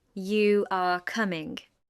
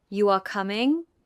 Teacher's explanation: A rising tone at the end of a statement can turn it into a question.